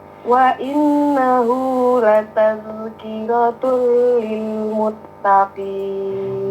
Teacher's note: Zal jangan berpantul, jangan lataz, karena bukan huruf pantul. Dijaga, jangan tawalud.